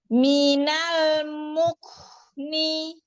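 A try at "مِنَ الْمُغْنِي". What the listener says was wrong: Tahan lagi lam sukunnya sebentar. Minal mukni. Mukni. Ka. Minal mukni. Jadi syiddahkan lagi ya kafnya ya. Nah, hamznya ya dikuatkan lagi, lagi, syiddahkan lagi. Minal mukni.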